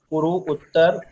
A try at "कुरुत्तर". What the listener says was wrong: कुरु उत्तर एक साथ बोलो ।